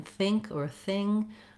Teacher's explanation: this TH is a voiceless TH. It sounds like in think or thing.